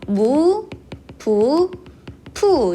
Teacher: 우를 발음하면 혹은 오를 발음하면 입이 동그랗게 오므려지는 원순모음이 돼요